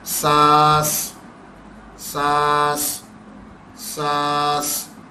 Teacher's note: سانس میں کیونکہ آخر میں بھی سین آ رہا ہے تو وہ ایک اور سیٹی آخر پہ بھی دے رہا ہے